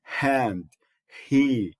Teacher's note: And then you have the h as in hand, he. So that's a voiceless glottal fricative